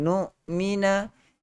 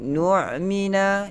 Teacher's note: Jangan tukar hamzah kepada ain.